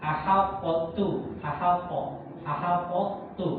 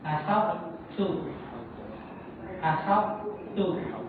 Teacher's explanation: Tetapi karena dia terjadi idgam ke huruf ta, maka sifat qalqalahnya hilang.